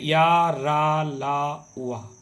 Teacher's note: चारों के चारों अंतस्थ व्यंजन सघोष हैं। मतलब उच्चारण में कंपन होता है और अल्पप्राण है यानी कम वायु बाहर आती है।